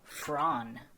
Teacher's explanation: LISANNE FROON, phonetically pronounced as Fran with a hard trilled R